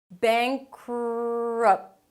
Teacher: so you move on to the R immediately after the 'k' sound - "beink-rup".